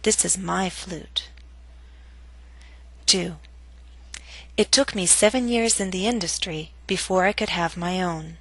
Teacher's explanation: your voice must reach a lower note on own compared to industry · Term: falling intonation